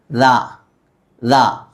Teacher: ദാലിൻ്റെ മഖ്റജ് നാവിൻ്റെ അറ്റം, തുമ്പ്. ഈ അറ്റം മേലെ പല്ലിൽ മുട്ടിക്കുക.